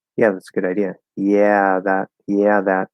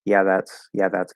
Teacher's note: I'm kind of letting that schwa get in there and then going into the th.